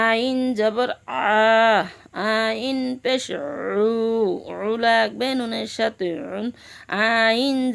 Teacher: আইন হলকের মধ্য হতে গলা চিপে আদায় হবে